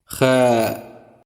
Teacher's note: It's voiceless uvular fricative sound